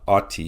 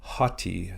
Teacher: we have this word hotti so it's not ATI it's hotti you add a rough breathing or an H sound at the beginning of the word